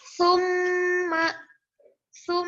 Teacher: ditahannya sebanyak dua ketukan dan dibacanya di ketukan yang ketiga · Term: gunah musyadadah